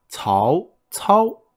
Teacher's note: so it's a ascending tone and then a flat tone · so it's an ascending tone, and then a flat tone. So that's why his name sounds slightly different between his first character and the second character.